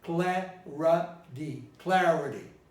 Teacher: Takes the stress, cla. Doesn't take the stress, ra.